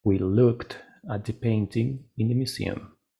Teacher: Otra vez termina en K, la K no tiene vibración, por lo tanto voy a agregar una T.